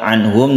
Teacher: anhum nun mati bertemu dengan ha izhar halqi, ini tidak didengungkan.